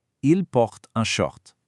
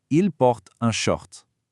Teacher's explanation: The R comes from the back of the throat and we drop the S sound entirely.